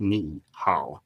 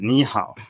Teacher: when you have two low, you go up on the first